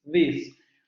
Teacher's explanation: Es dental fricativa sonora. Dental fricativa sonora. · vamos a dejar salir el aire de manera continua. La diferencia es que las cuerdas vocales van a vibrar. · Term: Fricativa dental sonora